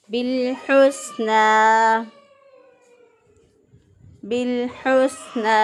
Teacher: हा को वस्ते हलक से अदा किया